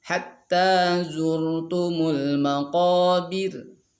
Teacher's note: ketika waqaf maka ro-nya jadi tarkik, karena berarti jadi ro sukun sebelum kasrah, sebelumnya harakat kasrah.